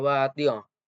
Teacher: Nah, tiong itu hukum tajwidnya ikhfa hakiki karena ada tanwin yaitu tanwin kasroh yang bertemu salah satu huruf ikhfa hakiki yaitu ta, dan cara baca dibaca dengung dan samar